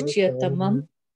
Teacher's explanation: that sh sound that you hear, it's not an sh sound actually. It's because of the h that comes before the y.